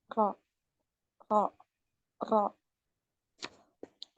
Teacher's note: Naik. Pangkal lidahnya naik. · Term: tebal